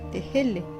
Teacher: Le H, qui est une sorte de fricative avortée, l'équivalent de notre H aspiré